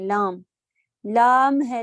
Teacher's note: لام الف مدہ ناک میں نہیں جاتا